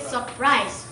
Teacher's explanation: so you have to pronounce it surprise so there is no R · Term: dissimilation